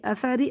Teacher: را کے نیچے زیر ہوگا تو باریک پڑھیں گے